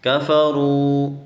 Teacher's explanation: واو ساکن سے پہلے اگر پیش ہو تو ہم اس کو پڑھتے ہیں واو مدہ، اس کو ہم کفروا پڑھیں گے، ایسے تھوڑا سا کھینچیں گے